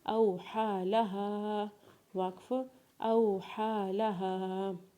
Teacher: حمزہ کو واولین کے ساتھ پڑھیں گے، ہا کے اوپر کھڑا زبر پڑھیں گے، یا کو نہیں پڑھیں گے کیونکہ اس کے اوپر کوئی بھی حرکت نہیں ہے، لام کے اوپر زبر پڑھیں گے اور ہا کو الف مدہ کے ساتھ پڑھتے ہوئے اسے ایک الف کے برابر کھینچیں گے